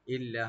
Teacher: মিন নাজওয়াহুম ইল্লা, ইল্লা হামজাকে রাইট দিবেন, লাম ডাবল করে একালে টানবেন, গুণা হবে না।